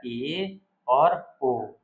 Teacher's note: ए और ओ ए और ओ ये कैसे हैं अर्ध संवृत है